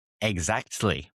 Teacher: often softens or even drops the T sound